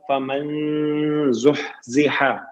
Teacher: نون ساکن آ گیا ہے، نون ساکن کے بعد زا ہے، اخفا ہوگا · ہا ساکن ہے، ہمس ہوگا